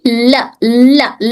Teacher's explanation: लाम में सिर्फ साइड वाली जबान टच हो रही थी यहाँ से यहाँ तक।